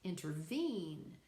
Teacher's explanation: The first two syllables aren't accented, the third one is. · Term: Anapestic